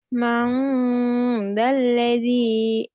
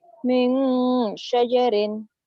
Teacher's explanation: Karena nun mati bertemu zal. Bacanya N-nya jadi eng gitu aja ya. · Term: ifa